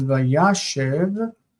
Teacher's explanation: When it becomes vayashev, the stress moves, and this is now short vowel because it's unstressed.